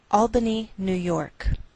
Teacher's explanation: we treat New York as one word and we place more stress on the second part York